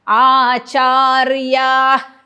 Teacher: आचार्या विसर्गाचा अर्धा उच्चार, च्यावरती आघात येईल